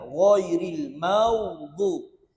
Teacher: Huruf ghin isti'la. Tebal bila sebut huruf ghin